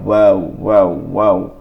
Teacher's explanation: 2 ঠোঁট হইতে ওয়াও বা মিম উচ্চারিত হয়